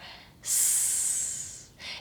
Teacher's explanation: I don't need to have my voice on, so I can make this sound with just air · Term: voiceless sound